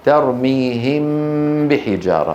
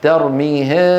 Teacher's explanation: ترك فرجة بين الشفتين عند إخفائها